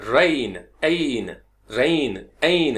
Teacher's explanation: इसमें ई और आई की साउंड है